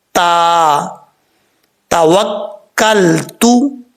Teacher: اس کا مخرج ہے زبان کی جڑ اوپر والے دانتوں کی جڑوں سے لگے تو تا پڑھا جاتا ہے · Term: دو نقطوں والا تا